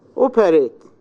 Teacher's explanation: The stress in the first syllable.